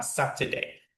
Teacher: the word sat is longer, louder, and higher when you read this word